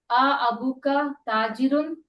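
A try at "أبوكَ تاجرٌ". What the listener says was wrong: ताजिरुन, इसको आ को घसीटते नहीं है, बातचीत के अंदर बुरा लगता है, तो इसको अ बोलना पड़ेगा।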